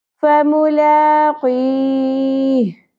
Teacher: جو آخری لیٹر ہا ہے وہ بھی ساکن ہو گیا, وقف کی صورت میں، اس لیے اس کو 3 الف کے برابر کھینچیں گے. اور اس مد کو کیا کہتے ہیں جو نظر بھی نہیں آ رہی ہے، اس مد کو کہتے ہیں مد عارض وقفی، یعنی وقف کی صورت میں عارضی طور پر یہاں پر مد آئی ہے.